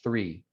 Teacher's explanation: that th sound at the beginning of the word three that's a fricative um because there's not a complete closure there's still some restriction